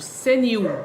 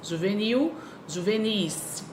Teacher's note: A sílaba tônica ali é nil. Ela é a sílaba forte